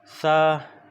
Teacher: तो सा हमारा क्या है, ये दंत से है